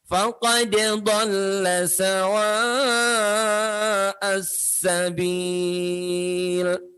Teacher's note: sawa'a, tanda panjang, gelombang cinta bertemu dengan hamzah. 4 harokat.